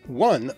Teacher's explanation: the non-standard pronunciation /wʌ/ arose in the south-west of England and eventually spread